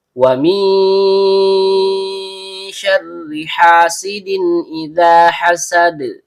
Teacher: tanwin bertemu dengan hamzah qot yang keluar dari tenggorokan bagian bawah. Maka di sini terjadi hukum bacaan izhar halqi. Artinya dibaca jelas tanpa dengung. · Kemudian setiap dengung keluar dari hidung. Ro ujung lidah bertemu dengan langit-langit bagian belakang karena rnya berharakat kasrah sehingga hukum bacaannya tipis atau tarkik. Ada ha tenggorokan bagian tengah kemudian ha berharakat fathah diikuti alif layinah.